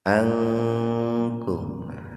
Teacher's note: nun mati ketemu dengan kaf, ihfa, tapi sepintas saja dibaca ihfanya itu. Asalnya terpisah sih Pak, asalnya itu an kemudian kum, asalnya begitu.